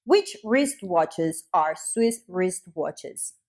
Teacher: the letter W is not pronounced in wristwatch and wristwatches